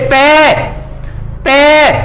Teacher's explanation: तो बिना होठ लगे आप बोल नहीं सकते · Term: पे वर्ग